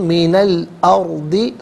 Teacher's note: الارض کی لام ساکن کے ساتھ ملائیں گے، درمیان میں سے الف یعنی حمزہ کو حذف کیا جائے گا